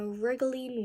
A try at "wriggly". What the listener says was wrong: Is it wriggling or is it something else at the end? Wriggly. Yeah, they're close, but it's a different ending, so we want to pay attention.